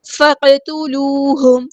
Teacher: فا کو ہم نے قاف کے ساتھ ملا دینا ہے، حمزۃ الوصل ہمارا ڈراپ ہو جائے گا · قاف ہمارا ہیوی لیٹر ہے، پورا ادا کریں گے، تا باریک لائٹ لیٹر ہے ، واو مد آئی ہے 2 کاؤنٹ لمبا کریں گے، ہاں